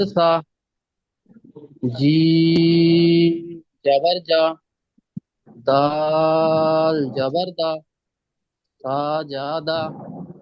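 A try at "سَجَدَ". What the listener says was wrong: না, টান দেবেন না সাজাদা। হুম, এই যে জাবার জের পেশ, এইগুলোতে একদম টান হবে না, মানে সাজাদা একদম হবে না, সাজাদা, কোনো টান নেই। সাজাদা।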